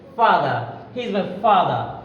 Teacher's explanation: তাহলে ফ ভ, দুইটার উচ্চারণ একই টাইপের, ফ ভ, দুইটা সাউন্ড, দুইটা কনসোনেন্ট সাউন্ড, ফ ভ। তাহলে উপরের দাঁত নিচে ঠোঁটের সাথে লাগিয়ে আমরা বলবো ফ ভ